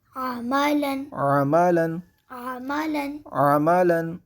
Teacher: عین کی آواز کو حلق کے درمیان سے ادا کیا جائے گا، وسط حلق سے عین کو ادا کیا جائے گا۔